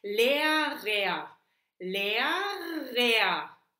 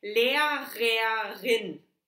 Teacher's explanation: the first R vibrates, the second one no